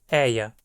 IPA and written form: ɛɪ̯a (ER)